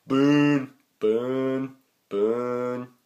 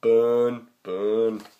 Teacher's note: this is kind of an unrounded back mid-vowel